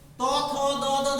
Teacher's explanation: ত উচ্চারণ করলে জিভ দাঁতে এসে যাচ্ছে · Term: দন্ত